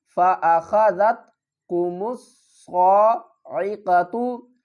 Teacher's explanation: جہرتاً فَأَخَذَتْكُمُ الصَّاعِقَةُ، فَأَخَذَتْكُمُ الصَّاعِقَةُ، صاد کو پر پڑھیں گے اور الف اور لام کو نہیں پڑھیں گے۔ میم کو ہم صاد کے ساتھ ملائیں گے، صاد کے اوپر تشدید ہے، سختی بھی کریں گے۔